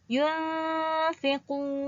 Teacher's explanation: Hukum ikhfa berlaku apabila nun mati bertemu dengan fa. Bacaannya perlu dengung. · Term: ikhfa hakiki